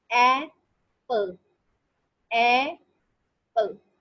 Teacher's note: ए is stress and पल is unstress